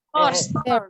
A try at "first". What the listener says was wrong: Cara bacanya bukan fierce, tapi first. First. First. fierce. fierce itu artinya kejam. Jadi bacanya first, bukan fierce.